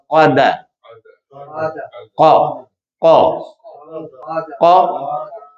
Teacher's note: ہونٹ گول نہیں ہوں گے، قا، د، دال باریک رہے گا، قاف موٹا ہوگا